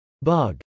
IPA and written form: bˈʌg (bug)